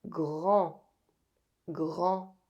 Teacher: With this word, be careful not to use your English pronunciation to pronounce it. The final D is silent and AN is a nasal vowel. The tip of the tongue doesn't go up to pronounce the N.